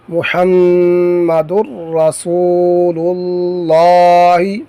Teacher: یہاں پر نون تنوین کے بعد رفع جر ملون میں سے را آیا ہے تو ادغام کریں گے لیکن بغیر غننے کے